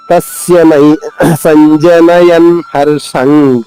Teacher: హ లోని మొదటి అక్షరం నా ద్వితం చేసుకుంటూ దాని తర్వాత ర్ష ఉంది ర్ష కానీ ర తో మొదలవుతుంది కాబట్టి ఇక్కడ ఆఘాతం ఉండదు